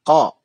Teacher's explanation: qaf itu keluar dari pangkal tenggorokan sebelah atas